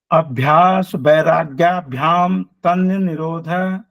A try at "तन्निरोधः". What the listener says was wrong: तन्न निरोध नहीं सर, ये इकट्ठा बोलेगा तन्निरोध। तन्न निरोध नहीं बोलेगा सर, ये तन्निरोध। तन्नी तन्नी तन्नी तन्निरोध